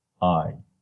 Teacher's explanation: So you go from low, the tongue rises to high, front.